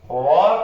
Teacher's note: व का उच्चारण स्थान दंतोष्ठ होता है।